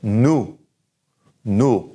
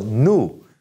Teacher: So say nous, nous. The O-U sound is oo, and no pronunciation of the S